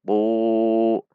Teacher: Bukan dibaca tu, namun dibaca tu. Tu agak terdengar tebal karena pangkal lidahnya meninggi atau isti'la.